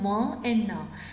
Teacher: nizzards are and now when you are pronouncing mom and now your oral cavity is closed but air can still freely escape through your nasal passage through your nose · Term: nasals